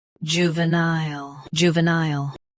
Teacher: Both US and UK have the same pronunciation of this word. Stress nile. Keep ju and va soft.